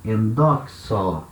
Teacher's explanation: A terminação é um ômega com iota subscrito, E essa sílaba também virou uma sílaba longa. Então agora o acento que estava lá na primeira sílaba, ele anda uma sílaba para frente.